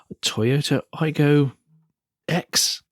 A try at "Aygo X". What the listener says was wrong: Cross. It's written as X, but it's pronounced Cross.